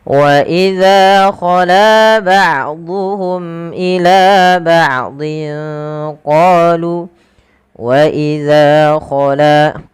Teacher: Panjangkan huruf za dan la kedua-duanya sama karena ia mad thobi'i